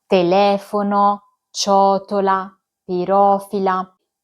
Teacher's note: Il terzo gruppo è formato dalle parole sdrucciole, quando l'accento cade sulla terzultima sillaba